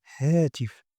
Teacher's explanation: the air passes through the vocal cords but without vibration voiceless